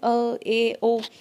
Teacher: अर्धविवृत में मुंह आधा सा ही खुलता है